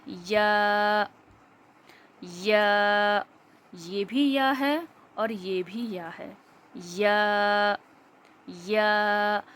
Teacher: زبان کا بیچ کا حصہ اوپر کے تالو میں جب لگتا ہے تو یا ادا ہوتا ہے